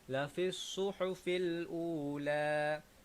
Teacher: Okey, lafissu dekat sini tuan-puan. Sama juga huruf sad kita kena baca dengan as-safir. Jadi seolah-olahnya kita baca dengan siulan sedikit, lebih tajam, lebih bagus.